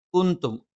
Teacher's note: ന നാവിന്റെ അറ്റം മേലെ മുൻപല്ലിന്റെ മോണയിലാണ്. കുന്തും ക നാവിന്റെ ആരംഭം മേലെ അണ്ണാക്കിൽ.